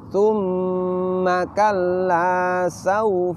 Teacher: hunah keluar dari al-khaisyum atau Pangkal hidung